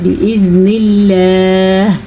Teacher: اللہ کا نام باریک پڑھا کیونکہ اللہ کے نام سے پہلے زیر ہے